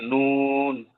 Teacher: জিহ্বার আগা তার বরাবর উপরের তালুর সঙ্গে লাগিয়ে